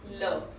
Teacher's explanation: देखो जो हमारी जीभ होती है वो कहाँ टच होती है, हमारे टीथ के पिछले पार्ट पे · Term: पार्श्विक व्यंजन